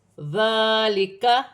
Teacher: ذال نرمی والا حرف ہے، کھڑی زبر ہے، ایک الف کی مقدار کھینچ کے پڑھا جائے گا